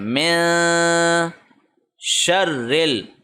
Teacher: نون کو ناک میں چھپائیں گے، 1 سیکنڈ کے لیے لمبا کھینچ کے پڑھیں گے اور زبان کسی جگہ ٹچ نہیں ہونی چاہیے۔ تو یہ ہوگا میں، من نہیں ہوگا، میں، من تو غنہ ہوگا نا، لیکن ہم نے اخفا کا رول اپلائی کرنا ہے۔